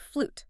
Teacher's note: sometimes that y sound vanishes completely and it's just a straight U sound